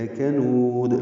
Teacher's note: پہ لام کو لمبا نہیں کرنا، لا کنود نہیں پڑھنا، لکنود، لام کاف باریک ہیں، جلدی پڑھنے ہیں، نون کو لمبا کرنا ہے ، واو مدہ ہے، اس کے بعد دال ساکن ہے تو